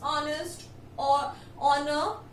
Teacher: In all of these words, H is silent and they are beginning with a O sound.